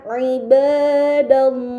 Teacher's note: maka lam yang berada di lafaz Allah harus dibaca secara tebal